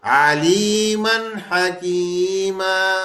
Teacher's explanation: علیمن نہیں نکلنی چاہیے آواز, عین کی آواز واضح ہو